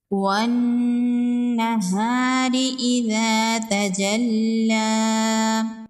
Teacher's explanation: وَالنَّهَارِ إِذَا تَجَلَّى، یہاں پر حروف شمسی ہے، واو کو نون کے ساتھ ملائیں گے، الف اور لام کو نہیں پڑھیں گے۔ نون مشدد ہے، نون مشدد پر غنہ ہوگا، الف مدہ ہے، ایک الف کے برابر کھینچ کے پڑھیں گے، را کے نیچے زیر ہے، را کو باریک پڑھیں گے۔